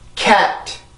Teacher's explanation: K 발음에서 내가 강세로 가기 위한 힘은 연구개를 맡고 있는 혀의 뒷부분의 힘을 더 강하게 주면 돼요. 그러면 내가 스스로 이제 그 강세까지 성대를 긴장시킬 수 있는 그 힘을 이 K로부터 받을 수가 있으니까 영어의 소리를 정확하게 만들어낼 수가 있죠.